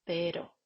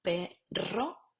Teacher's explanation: La R es la vibrante múltiple alveolar, tendríamos vibrante simple y vibrante múltiple